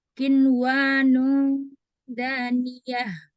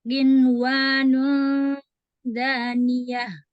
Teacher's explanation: Ini nun ketemu wa kan nggak dengung ya, nggak dileburkan ya. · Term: izhar mutlak